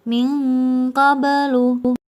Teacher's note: harus eng. Suara dengungnya lebih tinggi daripada suara samarnya. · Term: ikhfa adna